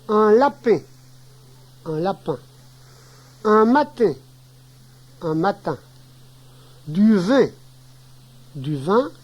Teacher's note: Un fermé bref, mâchoire très serrée.